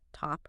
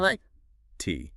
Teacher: your tongue goes up to the roof of your mouth, to the spot where you'd make the T, but you just hold it there. You stop the airflow, but you don't release that puff of air. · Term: stopped T